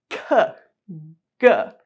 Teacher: sounds that are produced by pressing the back of your tongue up against the back of the roof of your mouth, just before it becomes your soft palate. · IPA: /k/ /g/